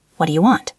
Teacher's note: The do and the u melted together. · The do is completely gone. It became a duh. >> It became a quick flap of the tongue. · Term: ghost words